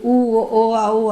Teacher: உதடுகளை குவிப்பதால் ஊ ஓ ஓ அப்படிங்கிற எழுத்து பிறக்கின்றன